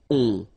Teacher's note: So you don't hear any N, so it's really on. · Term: nasal